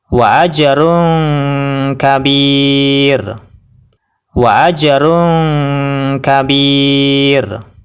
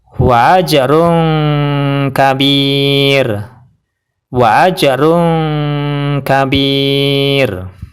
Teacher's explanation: Dan huruf sebelumnya adalah ya yang berharokat sukun, yaitu yang berwarna merah. Dan roknya dibaca tarqiq atau tipis, yaitu cukup pakai lidah saja dan bibir tidak terangkat